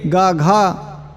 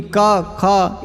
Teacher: इस पूरे कवर्ग का उच्चारण स्थान कंठ और आभ्यंतर प्रयत्न स्पृष्ट है